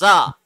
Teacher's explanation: The upper and the lower teeth have a little bit of gap and the tongue is not touching anywhere and you have to produce the Z sound in the letter زا.